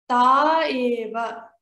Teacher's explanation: When taha and eva come together, we will pronounce it as ta eva. So we will not pronounce the visarga